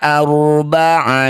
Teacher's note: ro sukun didahului fathah disebut bacaan ro tafkhim atau ro yang harus dibaca dengan tebal. Angkat ujung lidah sampai menempel di langit-langit mulut.